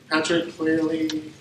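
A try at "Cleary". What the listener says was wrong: Clearly, no L.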